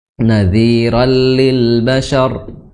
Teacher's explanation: Nadhira ya, rallil bashar, ra di situ ra tanwin bertemu lam jadinya idgham bila gunnah